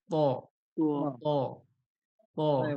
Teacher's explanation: জিহ্বার আগাটা উপরের দাঁতের গোড়ায় লাগাবেন, উচ্চারণ হয়ে যাবে ত। উপরের দাঁতের গোড়ায় জিহ্বার আগে আগাটা লাগিয়ে বলবেন, উচ্চারণ হয়ে যাবে। · বাংলায় যে ত আমরা পড়ি, ওই ওই ত সিম্পল, এটা মোটা করে, মোটা করে ত, তো ত, ত।